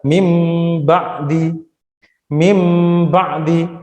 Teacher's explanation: Nah, di situ ada huruf nun sukun bertemu dengan huruf ba, maka dia dibaca iklab. Nunnya hilang diganti huruf mim, mim ba'di.